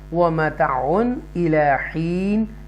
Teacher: تنوین کے بعد حروف حلقیہ حمزہ آ رہا ہے, حمزہ زیر ای, تو لہذا اظہار کریں گے, کلیئر پڑھیں گے.